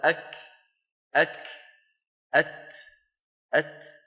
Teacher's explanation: حتى همس الكاف والتاء لما تقول أنت أك أك أت أت، هذا الهمس في الكاف والتاء في السكون أوضح منه في المتحرك